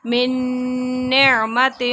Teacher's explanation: نون ساکن کے بعد نون آ گیا تو ادغام ہو رہا ہے غنے کے ساتھ